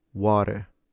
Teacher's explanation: As other possible varieties, we have the idea of using flapping in order to transform the T into a soft D. So in an nonrotic fashion, water in a rotic fashion, water, or to completely skip the T by using a glottle stop.